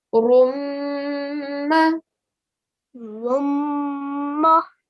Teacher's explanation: That was a gunna sound, 2-second gunna sound you need to give there.